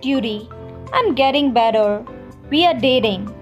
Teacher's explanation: d sound for example duty i'm getting better we are dating notice how in the american accent the t becomes slightly a d sound · British T is always clearly pronounced. American T slightly becomes a D sound.